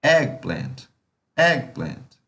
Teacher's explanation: Ela tem duas tônicas. Uma tônica no egg e no plant. Mas quem é mais forte? A do egg.